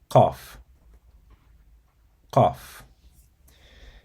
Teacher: To pronounce it, you have to place the back of your tongue near the uvula, and then you tighten your throat slightly to create a constricted sound. And then you release the sound with a crisp, strong burst, similar to K, but pronounced much deeper in the throat